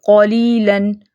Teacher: لام کو موٹا نہیں کرنا، لام جو ہے وہ لائٹ رہے گا